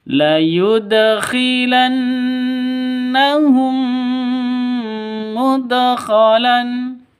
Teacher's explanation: Nun tasdidnya berdiri sendiri jadi ghunah musyaddadah dengung dua ketukan · mim mati bertemu dengan mim ini masuk ke mim yang kedua disertai dengung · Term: gunnah musyaddadah